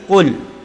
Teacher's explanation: Qul a'u yang pertama, qul qaf, makhraj qaf berada di lisan, pangkal lisan naik ke atas. Jadi bukan kul tapi qul.